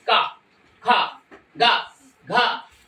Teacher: इसे बोलो का, कंठ से आवाज निकलेगी